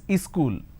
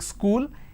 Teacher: in places like you P Bihar Jharkhand they add another syllable